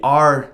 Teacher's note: So if you try and trill an American R, as in the R, the tip of the tongue is too far back. It is on the alveolar ridge, or even sometimes behind that, because we have a retroflex R.